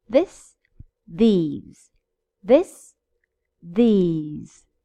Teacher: Well, they have different pronunciation. This, for the singular, has a short I, this. Whereas these has a long I, E.